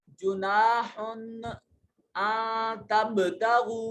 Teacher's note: नून साकिन के बाद ता हरूफ इख्फा में से यहाँ नून को अपने मखरज में छुपा के पढ़ेंगे। · जुनाहुन में अलिफ खाली अजहरकत माकबल मफ्तू अलिफ मद्दा एक अलिफ के बराबर लंबा करेंगे।